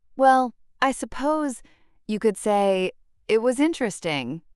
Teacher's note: The pause after well shows contemplation. The pause after suppose indicates uncertainty. The pause after say build suspense for the final judgment. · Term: strategic pauses